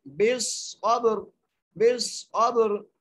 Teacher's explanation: با پہ قلقلہ کریں گے